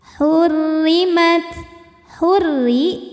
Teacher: Sebab ro-nya berbaris di bawah yaitu baris kasrah. Maka cara bacanya tipis, pangkal lidah tidak perlu naik, datar aja. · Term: tarqiq